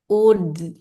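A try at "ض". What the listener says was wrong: jangan dikeluarkan ini ya, udara. masuk terus yang dia bukan mengeluarkan udara. Ud, ud. Tinggal nanti jangan ada pantulan atau jangan tadi mengeluarkan udara ya.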